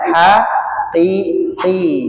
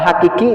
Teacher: Biar tidak diganti qafnya, diganti kaf. Kalau hakiki nanti beda lagi.